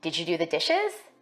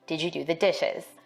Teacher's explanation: African American speakers may be more likely to ask a yes-no question with a level tone or a falling tone. For white speakers, we expect a rising tone in questions like these.